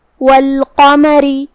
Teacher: یہاں حرف القاف ہے تو ہمیں اسے تفخیم سے ادا کرنا ہے. آخری میں را کے نیچے زیر ہے تو را کا حکم ہے ترقیق، مطلب ہمیں را کو ہلکی آواز میں پڑھنا ہے